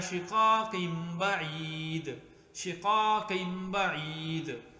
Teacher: تو شقاقین میں یہاں پر یہ نون تنوین ہے شقاقین، لیکن اس کے بعد نون تنوین کے بعد با آ گئی ہے، با بعید. تو جب نون تنوین کے بعد با آ گئی تو اس نون تنوین کو میم کے ساتھ تبدیل کر دیا